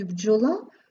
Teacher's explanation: бджола вже знаходиться в корені вимовляється як злито один звук